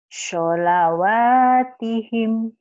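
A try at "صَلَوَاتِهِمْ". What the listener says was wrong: Sholawatihim. Cuman shodnya aja ya. Sholawatihim. Shodnya nggak ada anginnya. Saya kebayang itu walaupun nggak lihat mulutnya dimonyongi. Biasa aja, Bu. Shod baso, sholat, sholat. Bakso, sholat.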